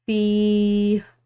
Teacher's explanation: یا ساکن ہے فا کے بعد تو اس کو پڑھیں گے ایک الف کی مقدار لمبا